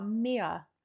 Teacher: But then when there are R's, in like the instance of mirror, you guys, it almost sounds like you don't pronounce the R. It's like it's a very soft R.